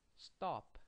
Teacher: notice that the vowel went up and no air came out of your mouth when you said this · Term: tense